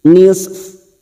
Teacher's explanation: Huruf fa ini tetap terbaca. Pada saat dibaca waqaf, sifat dari huruf fa ini harus terasa, ya, sifatnya ada di bibir